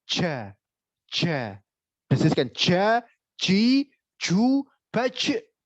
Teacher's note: Mengucapkan huruf jim mendesiskan nafas. Itu salah.